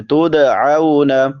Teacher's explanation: اذ، ذال نرم حروف میں سے ہے، 3 حروف جو نرمی سے ادا ہوتے ہیں، ثا، ذال، ضا، نرمی سے ادا کریں گے۔ تدعون، دال حروف قلقلہ میں سے ہے، اس پہ قلقلہ کریں گے۔